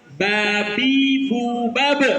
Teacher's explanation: pertemuan bibir atas dan bibir bawah itulah makhraj huruf ba